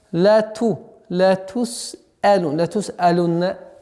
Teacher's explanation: удержание звука нун с насализацией в размере двух огласовок